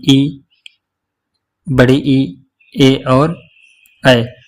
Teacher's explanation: जिसमें जीभ का अग्रभाग काम करता हो, जैसे कि ई, बड़ी ई, ए और ऐ। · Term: अग्रस्वर